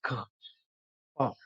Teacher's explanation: the excitation is not from the vocal fold. There is no voicing over there. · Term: unvoiced sounds